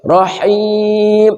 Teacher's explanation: Ha rahim dari tengah kerongkongan.